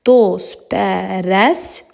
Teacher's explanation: Dost sözü sıtı ilə bitdiyi üçün, ondan sonra samitlə başlanan şəkilçi gəldiyi üçün burda t samiti tələffüzdə düşür